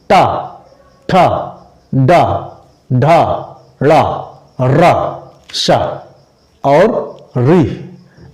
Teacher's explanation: जब आप लोग टा बोलेंगे तो आप लोग की जीभ ऊपर टकराती है, ऊपर टकरा के नीचे गिरती है आपकी जबान। टा, ठा, डा, ढा, ड़ा, रा, शा और री, ये सब आपकी जबान जाती है मूर्धा पे। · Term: मूर्धन्य